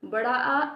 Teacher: विवृत बड़ा आ। इसके उच्चारण में मुख सबसे अधिक खुलता है